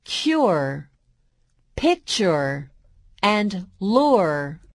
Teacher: long u plus r sounds like U before the r